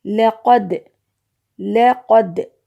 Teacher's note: دال کی آواز لوٹ کر کے آ رہی ہے۔ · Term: قلقلہ